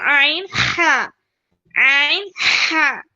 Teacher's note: middle of the throat या फिर दरमियानी हलक से होगा बीच के हलक से होगा